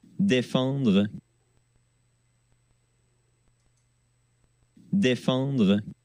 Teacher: la nasale, elle est un petit peu différente parce que vous entendez un petit N quand même. Et le N, le en, on a vraiment le sentiment qu'il y a un N.